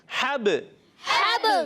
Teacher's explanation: حرف قلقلہ سے با, حرف قلقلہ جب ساکن ہو تو قلقلہ ہوتا ہے, آواز لوٹ کر آتی ہے